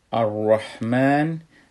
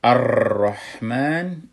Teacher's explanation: اگر ما بگیم که الرحمن، ای تکریر پیدا کرد، باید تکریر نشه، حرف را اتر لرزه لرزه نکنه